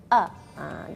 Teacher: Makhrajnya kan dari bagian bawah tenggorokan. Jadi hurufnya agak tegas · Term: huruf hamzah